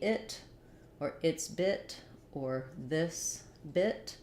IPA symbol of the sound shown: ɪ